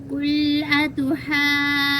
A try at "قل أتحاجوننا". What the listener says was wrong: ठीक, लेकिन मद थोड़ी की मद लाजिम है, ज्यादा लंबी करनी, 3 अलिफ के बराबर।